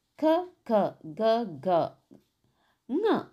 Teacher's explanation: ಕ ವರ್ಗದ ಅಕ್ಷರಗಳು ಕಂಠಭಾಗದಲ್ಲಿ ಹುಟ್ಟುವುದರಿಂದ ಅವುಗಳು ಕಂಠ್ಯ ಅಕ್ಷರಗಳು ಎನ್ನುತ್ತೇವೆ